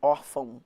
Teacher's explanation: Então, ó, eu vou da vogal para semivogal. Porque esse O tem som de U. Ele que é a semivogal, órfão. Quando a gente vai da vogal para semivogal, a gente tem um ditongo que está caindo, vai do mais forte para o mais fraco.